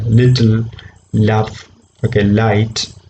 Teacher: the tip of the tongue is touching the teeth threads but the air escapes sideways so it becomes a lateral sound